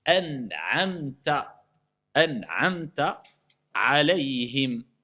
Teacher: le noun, il est non vocalisé. C'est quoi la règle? Al-idhar. C'est quoi son application? On prononce le noun simplement.